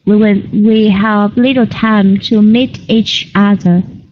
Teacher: You can link the ch sound in the end of the word each with the a sound in the beginning of the word other.